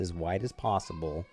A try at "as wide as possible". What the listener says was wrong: as wide, not white. Right? Yeah, It sounded like white. Yeah.